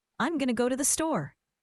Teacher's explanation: Going to became gonna.